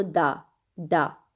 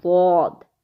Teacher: تو زبان کی سائیڈ اوپر کی داڑھوں پر لگے گی تو ضاد بنے گا، ضاد۔ اچھا، اس میں زبان ہماری پیچھے سے بھی اٹھے گی کیونکہ یہ پر حرف ہے، موٹا حرف ہے